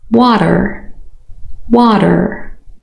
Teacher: Flap. A quick single tap of the tongue against the alveolar ridge. · So the T has changed and became a D. A very light tap. It's not the same as the D. It's shorter and it's a little bit softer and lighter, and it becomes its own sound really.